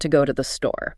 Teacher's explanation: I, to, and the are pronounced really quickly, almost merging into the other words